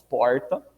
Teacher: vira e mexe, eu solto uns porta, né, com um R mais retroflexo